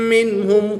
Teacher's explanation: نون ساکن کے بعد ہا حروف حلقی میں سے ہے تو یہاں پر اظہار ہوگا، نون ساکن کو خوب ظاہر کر کے پڑھیں گے.